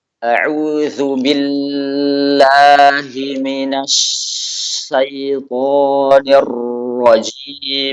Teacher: Ini tadi ada 3 tasydid. Tasydid pada lam, tasydid pada shin, dan tasydid pada ra. Dibaca dengan semuanya memanjang. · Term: memanjangkan tasdid